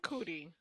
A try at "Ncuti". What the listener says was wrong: No, Ncuti. The N is silent. When there's an apostrophe, you pronounce the letter. When it's together, it's silent.